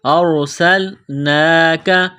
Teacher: کے ساتھ ملانا ہے سین کو لام کے ساتھ ملائیں گے سین کو باریک کرنا ہے سین میں سیٹی کی آواز پیدا کرنی ہے